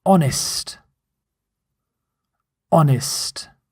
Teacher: Note, you don't pronounce the H. This is silent H at the start of the word honest.